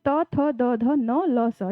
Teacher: तो जो ये न ल स है, ये स को हम लोग दंत व्यंजन भी कहते हैं, जीभ हमारी दांत को टच करती है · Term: दंत्य व्यंजन